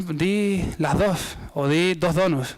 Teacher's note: un elemento del habla de Gran Canaria, la tensión de las consonantes sonoras